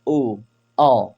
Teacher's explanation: बोलते हुए कहाँ पे जोर पड़ रहा है, जल्दी बताएं आप। कंठोष्ठ है ना, कंठ और ओठ दोनों पे।